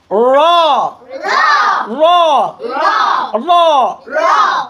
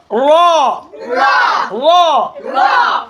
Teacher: র হরফ হচ্ছে জিহ্বার আগার উল্টা পিঠ, তার বরাবর উপরের তালুর সঙ্গে লাগাই দিতে হয়। জিহ্বার আগার উল্টা পিঠ, জিহ্বার আগার উল্টা পিঠ, তার বরাবর উপরের তালুর সাথে লাগাইতে হয়।